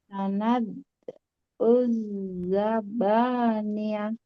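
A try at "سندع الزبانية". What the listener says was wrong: Oke, sekali lagi qalqalahnya. Sanad, jangan ditekan, jangan terlalu ditekan. Sanad. Nah, jangan lebih lembut. Sanad. Uzzaba.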